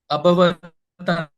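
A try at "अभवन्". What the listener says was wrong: No, abhavan. Ta is coming from here. Prabhuji, see, there is no ta added here, no.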